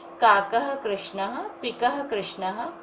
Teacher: इसमें विसर्ग है हर जगह, तो आपको ह की ध्वनि करनी पड़ेगी।